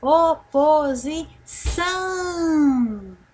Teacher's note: é uma palavra oxítona por quê porque a última sílaba foi a mais forte